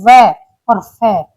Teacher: जिनका उच्चारण करते समय हमारे दांत और निचले ओठ आपस में मिलते हैं तो उन्हें दंतोष्ठ कहते हैं